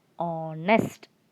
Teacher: But here it's not the case, because in this word H is silent. We do not pronounce H. And so the word begins with O sound. So it will be pronounced as honest, not honest.